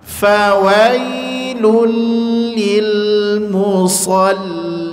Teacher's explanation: tasdidnya adalah tasdid hukmi, tidak tasdid asli. Maka jangan ditekan di situ, jangan dibaca fawailul lul, tidak.